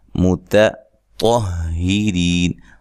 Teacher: रा को बारीक पढ़ना है, या मद्दा है तो वक्फ की सूरत में मद कर सकते हैं।